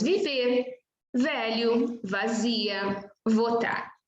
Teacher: Letra V representa o fonema V, V, né? De articulação dento-labial. V, dento-labial. V. Ou seja, os dentes superiores se apoiam ligeiramente no lábio inferior.